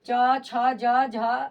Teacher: च छ ज झ य का उच्चारण स्थान आपका क्या है तालू है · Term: च वर्ग